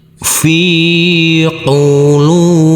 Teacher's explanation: Huruf lam kita baca panjang dengan panjang dua harakat karena huruf lam yang berdhammah u ini bertemu dengan huruf wawu sukun.